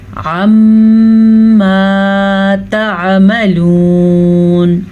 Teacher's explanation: میم کے اوپر شد ہے تو میم پہ غنہ کرنا لازمی ہے. عَمَّا تَعْمَلُونَ، آپ کو یاد ہوگا کہ نون اور میم ان دونوں پہ جب بھی شد آ جائے تو غنہ ادا کرنا ضروری ہوتا ہے.